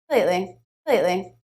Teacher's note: and then a stop T in the word lately